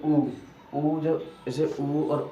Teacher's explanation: ये इनका जो होठ का जो आकार है वो गोल सा हो जाता है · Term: ओष्ठ